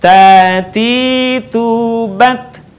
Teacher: dengan menyentuhkan ujung lidah kita dengan gusi gigi seri bagian atas, dengan mengalirkan sedikit nafas kita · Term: huruf Ta